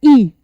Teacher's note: ई के उच्चारण में हमारा मुख सबसे कम खुलता है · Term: संवृत स्वर